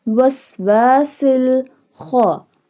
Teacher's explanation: Kha pronounced, this one kha pronounced from the middle part of throat